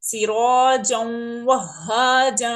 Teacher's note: یہاں پر ہم ادغام کر رہے ہیں یرملون میں سے واو آنے کی وجہ سے